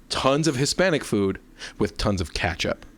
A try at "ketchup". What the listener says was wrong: Like a chow, but with up. It's like you were just like, ka-chow, you know?